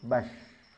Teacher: Tekanannya tidak ada. Mengalir begitu saja ketika dia sukun. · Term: rakhawah